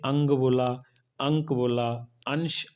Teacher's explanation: अनुस्वार के उच्चारण में नाक से अधिक स्वास निकलती है और मुख से कम निकलती है